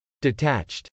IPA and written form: dɪtˈætʃt (detached)